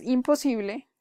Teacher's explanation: cuando su vecina es una bilabial, como es el caso de la P, debemos cambiar la N por la M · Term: alomorfo